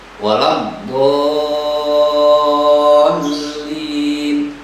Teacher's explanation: Ada mad huruf mad bertemu dengan lam, tasdid bertemu dengan tasdid. Jadi dibacanya panjang 6 harokat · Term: mad lazim kilmi musaqqal